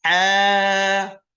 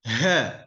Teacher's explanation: yang satu dari tengah tenggorokan, yang satu dari bagian paling dalam tenggorokan